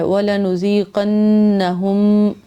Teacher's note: ایک تو نون پہ غنہ کرنا ہے، پھر میم پہ یہاں پہ دوبارہ سے غنہ کرنا ہے